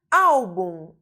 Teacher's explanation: nós temos uma paroxítona porque a sílaba tônica está na penúltima posição